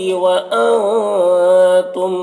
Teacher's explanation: نون کی آواز کو ناک میں چھپا کر پڑھیں گے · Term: اخفا